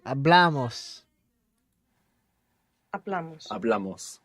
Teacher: with amos, we're adding on 2 syllables and the accent is going on the second last syllable. So it's in a different position, the accent, to the other versions.